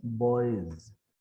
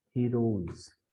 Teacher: all these s's here are after a vowel sound right that's why all the s's become z at the end